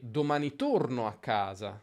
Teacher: Senti com'è più lungo il secondo torno. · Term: accento di frase